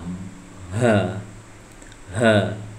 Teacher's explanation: Ha sama ini adalah tenggorokan bagian paling dalam. Ha, ha, ya jadi los.